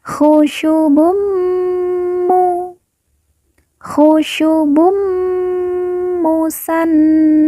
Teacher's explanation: Bun berharakatamah tanwin bertemu dengan mim yang bertasdid cara bacanya Bu kita leburkan langsung masuk ke huruf mim langsung fokus ke huruf mim kemudian ditahan ditekan didengungkan dua harakat